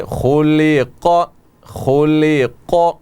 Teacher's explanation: خا یہ حروف مستعلیہ میں سے ہے, یہیں سے آپ جو ہے خا کو موٹا پڑھنے کی کوشش کریں. اور اسی طرح قاف بھی موٹا پڑھا جانے والا ہے, خلق خلق.